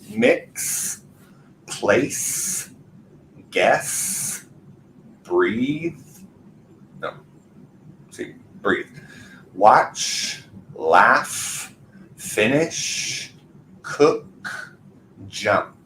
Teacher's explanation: at the very end of all of those verbs we have no vibration there's nothing moving here